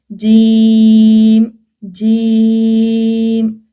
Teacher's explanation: जुबान की जो दरमियानी हिस्सा है ऊपर तालों का दरमियानी हिस्से से लगे। · جیم کی آواز کو ہم نے ناک میں نہیں کھینچنا